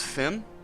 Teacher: The consonants, PF, it's much closer to an F than a P.